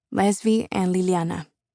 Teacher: The sound of the combined L's forces me to put my tongue against my upper teeth, pushing the air around the sides of my mouth. A lateral consonant.